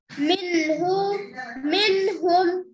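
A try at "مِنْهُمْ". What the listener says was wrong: नहीं, नून की आवाज जाहिर करना है ना बेटा। मिन्हु नहीं, मिन्हु।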